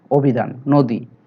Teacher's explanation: কারণ রস্বইকারের কারণে, রস্বইকার যুক্ত ব্যঞ্জন বর্ণ থাকার কারণে অ এর উচ্চারণ ও হয়ে গেছে